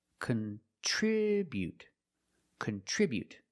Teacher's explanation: We put the stress on the second syllable.